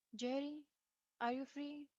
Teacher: i use rising intonation like a question i expect a response or i hope for a response